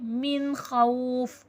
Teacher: इसमें सिर्फ हम नून को वाज़े करेंगे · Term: इज़हार हल्क़ी